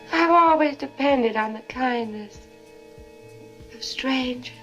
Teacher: You hear how there's no R in strangers? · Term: non-rhotic